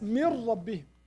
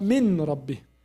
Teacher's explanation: We don't pronounce noon. We say right away ra, and ra with shadda. We say mir.